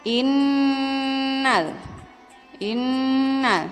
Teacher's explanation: ada Nun bertasydid yang apabila kita membacanya ditahan sekitar 2/3 harokat sebelum menyebut jelas huruf nun nya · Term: ghunnah